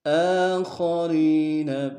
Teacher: خا کو موٹا ادا کریں گے